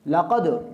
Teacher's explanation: اس میں دال کا قلقلہ ہے، تیسرے درجے کا قلقلہ ہم اس میں کریں گے، یعنی اتنا قوی قلقلہ اس میں ہم نہیں کریں گے